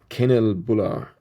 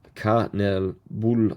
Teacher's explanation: emphasis on the third syllable